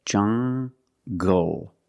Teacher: So you have the nasal sound and the hard G, jungle